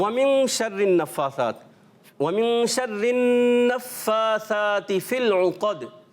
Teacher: اب دیکھیں اس میں جب ادائیگی کریں گے نفاثات جو ہے نون کے اوپر تشدید آنے کی وجہ سے ہم کیا کریں گے؟ ایک الف کا غنہ بھی کریں گے